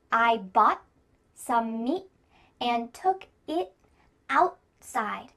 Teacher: Almost each of these words that end in T have a stopped T. · The word outside has a T in the middle, but because this word is kind of 2 words put together, out and side, we're going to have a stop T here in the middle. This is a little bit of an exception.